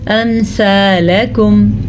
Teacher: امثالکم, سا نرمی سے پڑھتے ہیں, امثالکم سے بہتر آپ پڑھیں امثالکم. کاف کو باریک پڑھنا ہے, لام کو لمبا نہیں کرنا